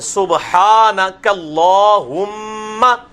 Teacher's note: میم پہ تشدید ہے تو غنہ ہوگا کم از کم ایک الف کے بعد.